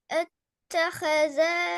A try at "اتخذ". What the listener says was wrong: اتخذ اتخذ என்று நீட்டுறது பல.